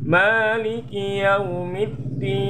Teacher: Ya, ma panjang. Ki jangan kui ya, tapi ki pangkal lidah agak ke depan.